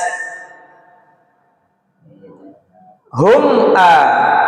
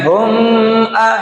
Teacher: Hukum mim sukun izhar syafawi. Dilarang dengung karena izhar jelas.